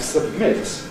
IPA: səbˈmɪt